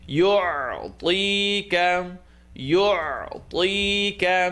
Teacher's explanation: ayn in the second part of the throat